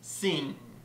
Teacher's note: a sound that's produced by bringing the back of the tongue up to the soft pallet the soft part of the roof of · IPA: /ŋ/